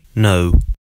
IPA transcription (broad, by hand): nəʊ